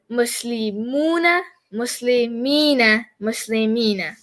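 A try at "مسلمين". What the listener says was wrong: Phenomenal.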